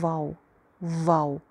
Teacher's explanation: वाव थोड़ा सा ट्रिकी इसलिए है कि इसको अक्सर लोग जो है वाव, जैसे हम उर्दू में बोलते हैं, उर्दू प्रोनंसिएशन वाव की और अरेबिक जो प्रोनंसिएशन है वाव की वो थोड़ी सी डिफरेंट है। उर्दू में हम मोस्टली अपने ऊपर वाले 2 दांत नीचे वाले होंठ पे लगा के कहते हैं वाव वाव, जबकि अरेबिक में इसमें दांत इस्तेमाल नहीं होते।